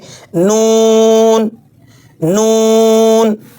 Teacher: زبان کی نوک اوپر کے دانتوں کی جڑ سے لگا کر ناک کی آواز کے ساتھ ادا کریں گے